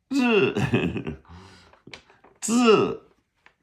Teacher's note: you start it with a D and then you go straight to the Z